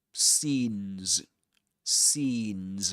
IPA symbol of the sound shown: iː